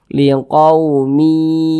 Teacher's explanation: kemudian kita dengungkan jadi suaranya itu kita tahan kita panjangkan sejenak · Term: idgham bhunah